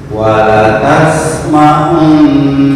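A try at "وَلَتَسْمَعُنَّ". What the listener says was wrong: Masih tertahan sedikit. Lepas. Wala tasma'un.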